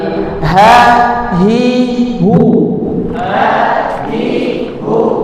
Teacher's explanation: Nah tenggorakan bagian bawah ada huruf hamzah dan huruf ha.